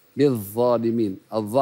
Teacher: حرف مجهور وليس مهموس فانتبه الى جهره باهتزاز الوترين الصوتيين